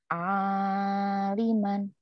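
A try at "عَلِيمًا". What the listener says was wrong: Salah, panjang pendeknya salah. Aliman.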